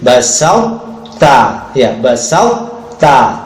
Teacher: sifat-sifat to-nya masih kedengaran ya, idbaknya dan istinanya. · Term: idgham naqis